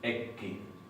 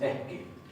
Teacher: En el caso de lo que se llaman tenuis o consonantes planas o oclusivas, las más simples, P, K, T, lo que tenemos es que se aspira, se produce una aspiración antes,